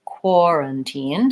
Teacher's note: in this word we have first syllable stress quarantine so the core part is longer